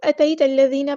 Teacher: یا ساکن سے پہلے زبر آئی ہے، مد لین ہو رہی ہے، یہاں پہ نرمی سے موڑیں گے